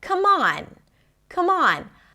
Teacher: And in this case, the M of 'come' becomes the beginning of the next word